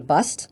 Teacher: There was a sound shift in certain parts of America in which R sounds were dropped from certain words.